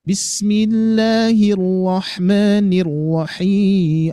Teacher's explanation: Ada ada penekanan hir hir gitu ya.